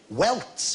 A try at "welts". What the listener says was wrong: Welts. No, welts with a T, not with a K.